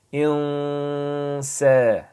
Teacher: the noon sakin, we have a sin, right? So we're going to pronounce this in the nasal sound.